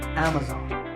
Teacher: the internet shopping giant amazon this word is commonly mispronounced amazon when you say it correctly the first syllable is a and the stress is on this first syllable